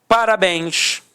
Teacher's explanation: Repare que a sílaba tônica é a última e é terminada em ens. Então, com isso, eu tenho acento por conta da regra da oxítona.